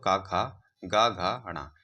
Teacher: यह सारे किस में आते हैं? कंठ से निकलने वाले व्यंजन है